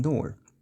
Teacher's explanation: retroflex pronunciation of T and D that are quite common in Indian languages